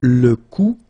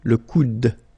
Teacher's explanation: you don't insist on this final E, it only gives you the sound of d at the end